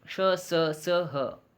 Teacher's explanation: इन वर्णों का उच्चारण स्थान के साथ प्रश्वास वायु छोड़ने वाली सांस के घर्षण से होता है। हमारे जीभ क्ष का उच्चारण करते समय तालु से स का उच्चारण करते समय मूर्धवा से तथा स का उच्चारण करते समय दांतों से स्पर्श करती है। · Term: उष्म व्यंजन